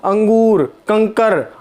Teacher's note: अनुस्वार उच्चारण जिसमें अंक की बिंदी लगती है, जिसमें जैसे हमारा अंगूर, कंकर, अंक की बिंदी, ठीक है, वायु नाक से निकलती है। अनुस्वार में अनुस्वार जिसमें वायु नाक से निकलती है